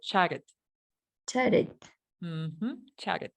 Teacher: La razón por qué estoy pronunciando estas dos T's como R es porque están entre dos vocales.